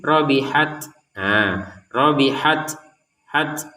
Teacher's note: ta yang harus kita keluarkan nafas sedikit saja. Jangan banyak-banyak.